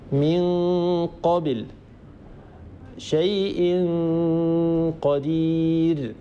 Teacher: أيضا هنا في القاف لا صويت من الفم لأن المخرج ينقفل تماما بسبب ارتفاع أقصى اللسان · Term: إخفاء